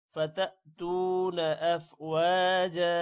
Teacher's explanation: فتأتون تا کے بعد واو ہے لمبا کریں گے